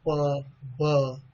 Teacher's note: So these, during the articulation of these sounds, two lips comes into the contact with each other. It blocks the air in the mouth.